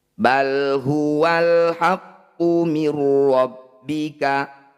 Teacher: Bal huwal haqqu mir rabbika, nun sukun bertemu ro disebut bacaan idgham bila gunnah. Bunyi nun sukun langsung masukkan pada ro tanpa didengungkan. Bila gunnah itu artinya tanpa dengung, tanpa ditahan, cukup ditekan saja.